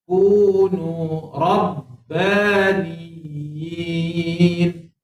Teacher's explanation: fathah maksud dia buka maka buka mulut Ra jangan muncung sebab muncung namanya dammah. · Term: ra baris fathah